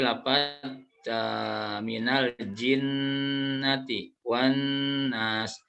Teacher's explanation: bertasydid jadi ketika Nun dan mim bertasydid itu harus guna cara membacanya adalah ditahan sampai 3 harokan